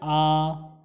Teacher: जिन स्वरों के उच्चारण में मुख द्वार पूरा खुल जाता है उन्हें हम विवृत या ओपन कहते हैं।